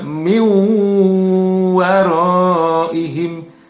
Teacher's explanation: tetapi huruf wau nya yang terdengar ya dengan dibaca mendengung · Jadi min waraihim, nun mati, ya, di sini masuk dia ke dalam huruf wawu, ya, sehingga nun matinya tidak terdengar, tetapi huruf wawunya yang terdengar, ya, dengan dibaca mendengung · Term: idgham bigunah